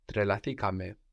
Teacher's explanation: We keep the accent third from the end.